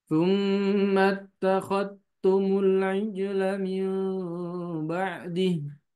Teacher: ternyata yang syu'bah tidak membaca huruf dzalnya. Kenapa? Karena langsung idgham kamilan ke huruf ta, ya. Ke huruf ta.